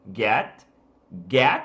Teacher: Quando a gente fala tô aqui falando o som do get, ele é um E do português, só que mais fechado.